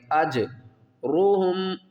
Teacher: جیم کے اوپر قلقلہ کریں گے، جیم کو ہلا کر پڑھیں گے